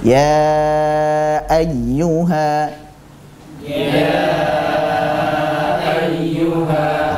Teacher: adalah huruf yang berharakat fathah tib contohnya adalah kata ya ayyuha Nah kita baca ya dengan panjang empat harakat ya di situ nanti dihukumi sebagai Mad Jaiz munfasil kita baca